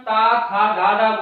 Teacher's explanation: तो हमारी जीभ है वो कहीं ना कहीं हमारे दांतों से टच हो रही है, तो उसको दंतक बोल दिया गया।